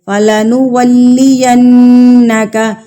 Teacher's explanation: نون مشدد تو ہم اس پر غنہ کریں گے، ناک میں آواز لے کر جائیں گے۔